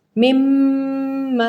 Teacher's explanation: ناک میں آواز گئی اور بھن بھناہٹ محسوس ہوئی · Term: غنہ